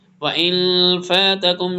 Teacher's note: نون ساکن کے بعد اخفاء آ رہا ہے